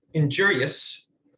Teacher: if you do the thing where you say injurious kind of mush them together great we've taken one syllable out